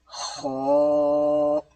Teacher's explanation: اس کی آواز تھوڑی پر کی ہے، یعنی کہ موٹی آواز میں پڑھا ہے